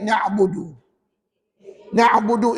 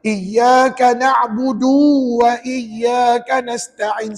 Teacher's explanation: nabudu itu dibaca dengan pendek maka du tu jangan panjang sebab Pernah saya dengar ah bacaudu dua harakat ada ada mungkin